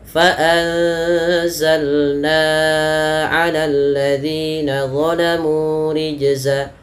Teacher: Na-nya lebih panjang dibandingkan zi-nya